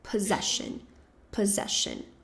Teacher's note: E a segunda sílaba vai ser a mais forte.